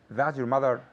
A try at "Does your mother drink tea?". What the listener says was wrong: Does. So with this word, your tongue has to stay inside your mouth, right? If you say does, no, your tongue has to be behind your teeth.